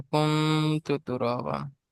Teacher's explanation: নুন সাকিনের পরে হরফে ইকফার 15টি অক্ষরের মধ্যে তা এসছে, তাই নুন সাকিনের আওয়াজকে এক আলিফ পরিমাণ গুণনা করে পড়তে হবে।